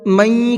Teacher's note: نون ساکن کے بعد میں کہیں پر بھی اگر یا آ جاتا ہے تو وہاں غنے کے ساتھ میں پڑھتے ہیں۔ من، یہ جو ناک میں پڑھ رہا ہوں اس کو غنہ کہا جاتا ہے